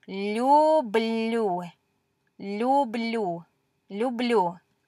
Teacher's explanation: this is really hard for us English speakers to say because we're palatalizing these L's, which is kind of a hard thing for us to do.